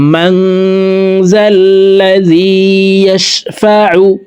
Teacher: ওয়া মা ফিল আরদ লাহু মা ফিস সামাওয়াতি ওয়া মা ফিল আরদ মান যাল্লাযী ইয়াশফাউ, মাং এখানে ইকফা গুন্না, নুন সাকিনের পরে ইকফার 15টি হরফের ভিতরে একটি হরফ জাল আসছে, এই কারণে এই নুন সাকিনকে নাকের ভিতরে লুকাইয়া গুন্নার সহিত পড়তে হবে